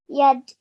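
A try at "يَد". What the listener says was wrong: Now, rather than just ending your sound on the dal, make a bit of a bouncing sound.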